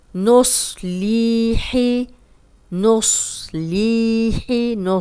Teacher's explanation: صاد موٹا ہے لیکن کلیئر اس کی آواز آ رہی ہے